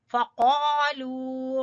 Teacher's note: फ़क़ालू, क़ाफ ज़बान की जड़ से, फ़क़ालू, क़ा को अलिफ खींचेंगे अलिफ मद्दा की वजह से और लू को वाव मद्दा की वजह से